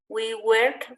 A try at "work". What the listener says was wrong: We work. Es más como una O, work. Work for free. Que te está sonando como una E. Work, no, work.